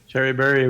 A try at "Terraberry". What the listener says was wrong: It doesn't sound like you're saying terror anymore. It's like Terryberry. No, it's Terryberry.